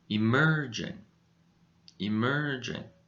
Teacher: now where do you think the stress is in this word the stress goes on the second syllable so this syllable is a little bit higher in volume